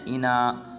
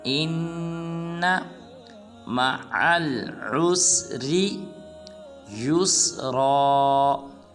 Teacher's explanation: اس کے بعد آیت نمبر 6 ہے ہمارے آج کے لیسن کی، وہ ہے اِنَّ، بعض مسلمان پڑھتے ہیں اِنا، یہ بالکل غلط ہے، حمزہ کو نون مشدد کے ساتھ ملائیں گے اور غنہ بھی کریں گے